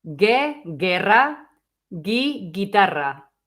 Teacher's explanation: we didn't pronounce the U, we just made it soft, okay? So we went from je to ge and from ji to gi.